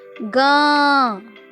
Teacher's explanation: हमारे मुख से अधिक ध्वनि रहती है और नाक से कम